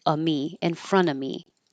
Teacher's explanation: if the next word begins with a consonant you won't hear the V you won't hear the F you can just drop it